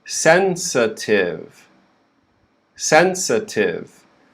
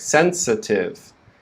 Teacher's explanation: the stress is on the first syllable sen and then the second syllable we have the schwa